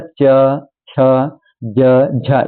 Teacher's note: तो आपका जो जीभ है आपके तालु से टच होता है